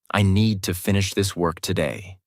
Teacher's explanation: Need, finish, work are strong. Other words are softer.